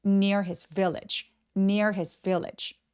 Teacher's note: his가 잘 안 들리게 near his village라고 강세 외의 나머지 부분은 힘을 쫙 빼 주세요